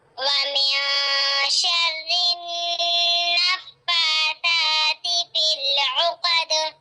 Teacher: यहाँ पर भी देखें नून साकिन के बाद शीन नजर आ रहा है, तो यहाँ पर भी इक्फा बारीक इक्फा हो रहा है। नून साकिन की आवाज को एक अलिफ की मिकदार छुपाकर पढ़ेंगे